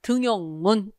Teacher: 니은이 첨가되지 않고 그냥 표기 그대로 등용문 이렇게 발음하죠. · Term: 니은 첨가의 예외